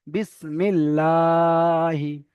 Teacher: লাম, আল্লাহ শব্দ, এখানে লাম লাম তাজদিদের ইজরাটা করলে হবে না, এখানে আল্লাহ শব্দের ইজরাটা করতে হবে। আল্লাহ শব্দের আগে জের এসেছে, আল্লাহর লামকে বারিক করে পড়তে হবে, অর্থাৎ লা পড়তে হবে।